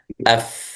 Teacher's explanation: الفاء من بطن الشفة السفلى مع أطراف الثنايا العليا. هذه الثنايا العليا باللون الأبيض، وهذا بطن الشفة، الشفة السفلى، فمن أطراف الثنايا مع بطن الشفة السفلى. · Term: مخرج الفاء